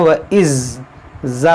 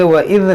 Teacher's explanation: تو زا نہیں، یہ ذال ہے، ذال کو نرمی سے پڑھا جاتا ہے